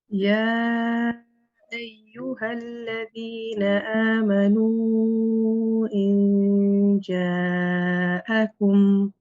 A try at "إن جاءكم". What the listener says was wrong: The kum again also. إن جاءكم.